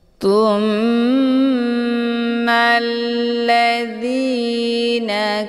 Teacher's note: cara ditekan kemudian ditahan lebih kurang dua kali ketukan [Musik] tumma hukum bacaan ghunah musyaddadah dibacanya sambil didengungkan